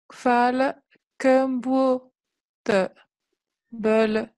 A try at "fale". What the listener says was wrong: Mais toi, tu dis fale, il y a un coup de glotte qui coupe d'abord. Fa'al.